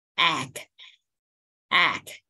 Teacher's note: E bướm đúng không? E. Bè miệng ra và hạ cằm xuống. Egg. Egg.